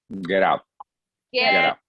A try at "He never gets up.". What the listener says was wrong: Do you hear yourself pronouncing the letter S? He never gets up. Gets up. Gets up. You need to pronounce the letter S.